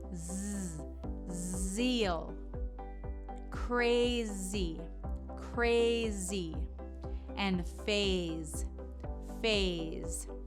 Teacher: the Z is similar to the S but think of what we use for the V instead of blowing it's a vibration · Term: z sound